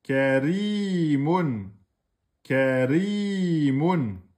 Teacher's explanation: Vous n'oubliez pas le deux temps au milieu avec le ya de prolongation. Karimun. Et vous le prononcez de façon amincie.